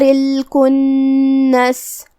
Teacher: کلمت الکنس میں کاف پہ پیش ہے تو ہمیں کاف کو پیش سے ادا کرنا ہے۔ نون پہ تشدید ہے، 2 حرف کے برابر ہم نون کو پڑھیں گے۔ آخری میں سین پہ رکیں گے تو اس پہ جزم سے رکیں گے تو ہم سین کو ظاہر کریں گے۔